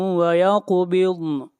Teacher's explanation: ضاد کو موٹا پڑھیں گے، ضاد بھی حروف مستعلیہ میں سے ہے